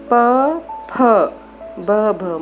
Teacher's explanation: ओष्ठ्य होता है हिंदी का जो फ व्यंजन है, दोनों होठों को मिलाकर बोला जाता है।